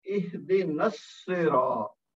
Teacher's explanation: نون کو صاد کے ساتھ ملا دیا تو الف اور لام کی آواز نہیں آئی